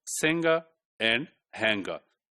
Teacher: There is only one engma sound. It's not followed by the g sound.